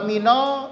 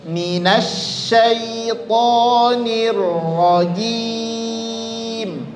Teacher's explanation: nun dengan sya itu bukan huruf syafatain. Sama-sama huruf lidah, huruf lisan dia